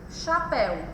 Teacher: É uma oxítona, a sílaba tônica é a última